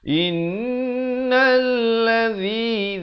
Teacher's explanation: Nun sabdu, mim sabdu itu jangan lupa. Dengungkan dua harakat. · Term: Wajibul gunnah